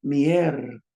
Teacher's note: Notice how I'm putting the stress in the front. Honor the accent mark.